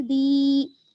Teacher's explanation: دال یا زیر دی، یا جو ہے یہاں پر یا مدہ ہے کیونکہ یا ساکن ہے اور اس سے پہلے زیر ہے، اس کو ہم کھینچیں گے